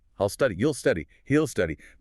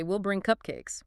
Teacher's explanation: most of the time English speakers completely swallow the word will and shorten it to just a tiny little L sound attached to the pronoun.